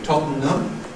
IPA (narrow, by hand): ˈtɒtn̩əm